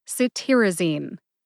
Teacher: Emphasize tear. See if you can hear the emphasis when I say it again.